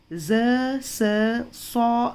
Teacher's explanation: ज़बान की नोक अगले ऊपरी और निचले दांतों के किनारे को मिलाने से ज़ स और सौ अदा होते हैं।